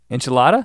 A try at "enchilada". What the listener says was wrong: Yeah, it's not an inch, it's an anch. Enchilada. It's an E, not an I. Enchilada. You say enchilada.